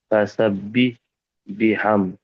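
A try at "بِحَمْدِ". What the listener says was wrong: দালজের দি, এটা বাদ যাচ্ছে। বিহামদি। হ্যাঁ, বিহামদি।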